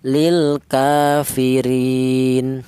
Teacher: boleh dibaca qasar yaitu satu alif atau dua harakat atau dua ketukan. Ya, seperti mad thaobi'i.